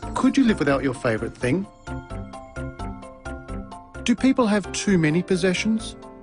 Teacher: no type questions rising intonation patterns are used for these questions did you notice the pitch of his voice rise at the end of the questions